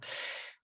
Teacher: It's a long, lazy sound. Very relaxed.